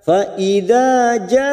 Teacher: ada mat yang bertemu dengan hamzah dalam satu kalimat, mat wajib mutasil 5 harokat